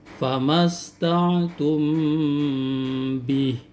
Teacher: Tidak boleh Anda membaca famasta'tum bih tanpa ditahan dengan ukuran panjang 2 sampai 3 harakat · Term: ikhfa syafawi